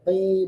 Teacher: qof juga tebal qi bukan ka tipis